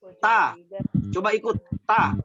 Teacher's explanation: posisinya lidah ta itu menyentuh pangkal gigi atas, bukan ujung gigi, pangkalnya gigi. Beda itu pangkal gigi, beda ujung gigi.